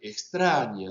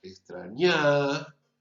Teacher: Que una vocal que relativamente tendría que ser más corta que la otra, por ejemplo, en extraña, la E tendría que ser más breve que la primera y mucho más breve que la tercera. Si yo alargo la tercera A y entonces en lugar de extraña digo extrañá, percibimos como que el acento se ha desplazado.